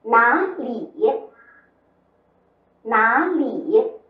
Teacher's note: 注意里的声母是边音了